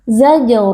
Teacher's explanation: Alif yang sebelumnya berharakat fathah kita baca panjang dua harakat zaj huruf Jim yang sukun berlaku Qalqalah karena di sini Jim sukun terletak di tengah-tengah kata